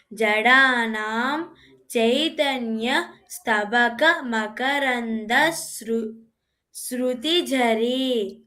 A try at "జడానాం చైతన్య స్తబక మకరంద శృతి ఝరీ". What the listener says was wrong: ఆ ఝ ఒత్తు వినిపించాలి. బాకి ఒత్తు లేదు. స్తబక అనేది ప్లెయిన్, ఝరీ దగ్గర ఒత్తు ఝ పలకాలి.